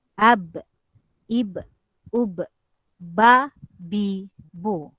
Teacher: Jadi kalau kita sebut memang bibir atas dan bibir bawah ini akan berjumpa. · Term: huruf ba